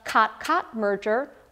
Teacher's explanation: kotkot merger or the katskot merger what's happening here is that two o sounds are actually becoming indistinguishable from each other in certain areas